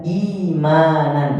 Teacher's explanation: Hamzah ketika berharakat didahului oleh harakat kasrah maka orang Arab lebih gampangnya menyebutkan imanan sehingga Hamzah diganti ya karena didahului harakat kasrah